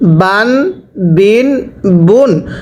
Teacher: বা আলিফ দুই জবর বান, বা দুই জের বিন, বা দুই পেশ বুন, বান বিন বুন। স্মরণ রাখবেন, তানভিনের উচ্চারণ বাংলায় শেষে দন্তন্য উচ্চারণ হয়।